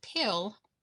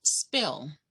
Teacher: you should feel a little puff of air when you say pill but not when you say spill